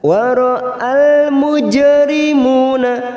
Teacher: jim sukun qalqalah sugro, kita pantulkan